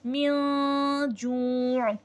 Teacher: नून साकिन या तनवीन की आवाज़ को छुपाना नाक में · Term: इख्फा